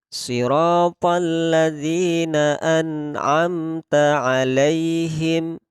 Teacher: kalau ada nun sukun bertemu ain pada contoh surat Al-Fatihah ayat 7 ini, maka kita membaca jelas. Tidak boleh kita dengungkan